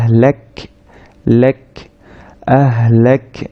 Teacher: কাফ সাকিন যখন আমরা উচ্চারণ করছি হালকা একটা বাতাস বের হবে